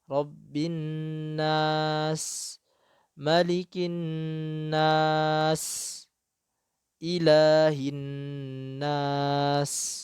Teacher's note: biarkan panjang dulu. Nas, baru masuk ke sinnya.